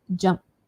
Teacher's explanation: Can you hear the t ending there? T. So light, just the air coming out.